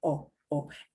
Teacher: if you want it to sound very Spanish, you need to keep your O very short